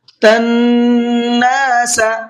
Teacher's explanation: نون کے اوپر تشدید ہے تو نون میں غنہ کر کے پڑھیں گے